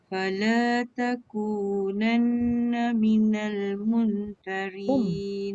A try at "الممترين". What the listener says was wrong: Mum rapat bibir. Tak dengung. Macam akak buka jadi nun pula. Mum. Dia mim.